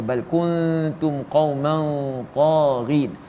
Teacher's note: Di situ kita boleh lihat ada dua hukum ikhfa hakiki, dan di mana kuntum nun mati bertemu dengan ta, bila mana dibaca perlulah kita mendengungkan ia sebanyak dua harakat, dan qauman taghin juga dua harakat.